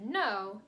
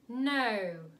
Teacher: the O sound in the British dialect is elongated. So instead of no, you get no.